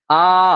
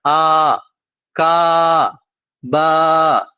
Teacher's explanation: الف یہاں پر جو ہے وہ تھوڑا کھینچ کر پڑھا جا رہا ہے، جب کھینچتے ہیں تو لمبا مصوتا ہے